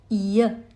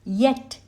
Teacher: It is a talavya or a palatal sound since the air reflects off the palate.